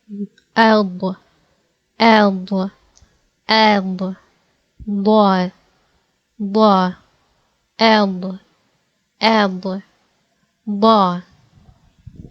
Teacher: The right or the left or both sides of the tongue should be pressing the upper palate, okay? While making the full and thick sound of Daad, okay?